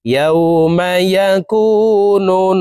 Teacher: হরকতের বামে নুনে মিমে তাসদিদ হইলে সর্ব অবস্থায় নাকের বাসি থেকে গুন্নাহ করিয়া পড়িতে হয়। এই কারণে এই পেশওয়ালা নুনটি তাসদিদওয়ালা নুনের সাথে 3 সেকেন্ড পরিমাণ গুন্নাহ করে ধরে রেখে পড়ব। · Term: ওয়াজিব গুন্নাহ